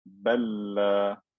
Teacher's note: This lam has sukoon, the next lam had a fatha, they're identical, so I merged it into one lam with shadda.